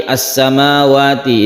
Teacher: Jelas lamnya harus terbaca jelas, tidak dimasukkan ke huruf berikutnya, maka dia disebut izhar.